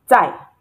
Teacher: the two tones here are the falling tones and not the flat Tone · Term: fourth tone